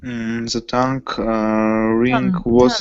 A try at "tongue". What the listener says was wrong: Tongue. G is not pronounced. Tongue.